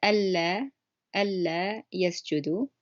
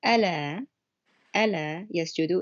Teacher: So you could tell that it's a double L sound on the first word that I said.